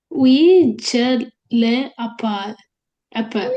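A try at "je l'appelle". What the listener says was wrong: We shall lapel. අර එකට කියවන්න. L එකත් එක්ක read කරන්න. L apostrophe නේ. We shall lapel.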